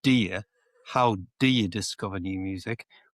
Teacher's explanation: You can use the schwa sound, which is the little uh sound, so it becomes do you?